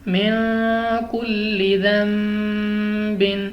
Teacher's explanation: نون ساکن کے بعد کاف آ گیا، اخفاء کا قاعدہ ہے، ہم نے یہاں پہ غنہ کر کے پڑھنا ہے